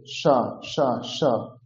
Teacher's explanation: তালব্য স উচ্চারণ হবে তালু থেকে